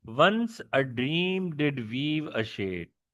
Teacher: Stressed, unstressed, stressed, unstressed, stressed, unstressed, and then stress again, but the unstressed syllable is missing.